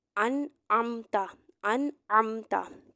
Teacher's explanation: ऊपर जजम है इसके बाद आईन हरूफ अलकी आ गया तो यहां पर गुना नहीं करेंगे ना ही हर्फ को लंबा करके पढ़ा जाएगा बल्कि नून की आवाज वाजिया निकलेगी इसके मखर पर जाएंगे यानी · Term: इजहार